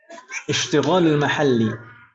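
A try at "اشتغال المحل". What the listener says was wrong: Istighol. Istighol. Pakai sin ya, istighol.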